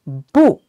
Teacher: Well, as we can see, this character has two tones, and one is the fourth tone, falling tone, bu, and the other one is the second rising tone, bu.